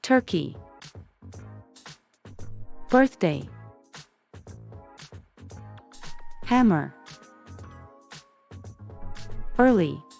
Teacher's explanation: Modified vowel when the consonant R comes after the vowel E, it changes the sound of the vowel as in heard. The sound is a combination of the schwa and the R sounds.